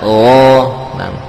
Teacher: Dari ujung tenggorokan di sekitar sekitar pangkal lidah, ya, sekitar pangkal lidah.